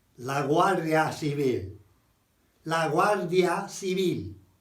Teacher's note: But when the GU is followed by an A, it's a GW sound, like La Guardia Civil.